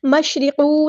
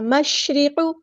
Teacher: قاف کی پیش کو لمبا نہیں کرنا، حرکات کو لمبا نہیں کرتے